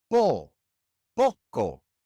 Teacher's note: Poco ends in an O, another vowel. And so the natural stress goes on the second to last syllable